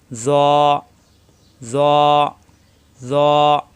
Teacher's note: জিবের আগা দাতের আগায় কিন্তু মোটা হবে একালি পরিমাণ টান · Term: মোটা হরফ